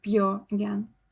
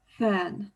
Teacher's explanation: nurse vowel is clearly more front and open